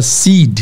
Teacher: Estiquem o I. O I é muito importante que se estique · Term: I longo